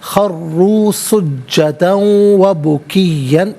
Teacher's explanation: سجدن میں دال پر 2 زبر کی تنوین ہے، اسے واو کے ساتھ ملا کر واو کی آواز کو ادا کیا جائے گا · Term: یرملون کا قاعدہ